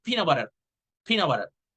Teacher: Since you're saying it fast, you omit the T.